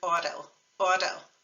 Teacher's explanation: we're not actually saying a t sound are we it's more like a d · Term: single R